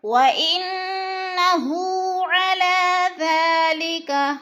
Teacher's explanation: وَإِنَّهُ، ان کی نون مشدد ہے، غنہ کریں گے، ناک میں آواز لے جائیں گے. ہو الٹا پیش کو کھینچ کر پڑھنا ہے، ایک الف کے برابر